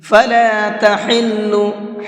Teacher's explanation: حا کو حلق سے نکال کر کے پڑھیں گے